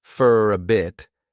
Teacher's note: they'll pronounce for as more of an unstressed fur